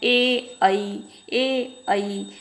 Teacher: अर्थात ए और ऐ कंठ तालव्य से बोले जाने वाले वर्ण होते हैं। ए ऐ बोल के देख लीजिए, स्पष्ट हो जाएगा।